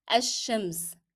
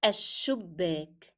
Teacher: the sound of lam will be dropped in pronunciation.